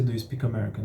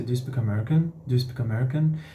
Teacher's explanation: A gente tem uma entonação que sobe, uma rising intonation, né? Todas as perguntas cujas respostas terão sim ou não, a entonação sobe assim no final.